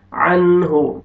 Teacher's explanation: نون ساکن کے بعد حروف حلقی میں سے ہا ہے، یہاں پہ آپ نے اظہار کرنا ہے، جلدی پڑھیں گے · الف مدہ، الف سے پہلے زبر، میم کو اپنے کھینچنا ہے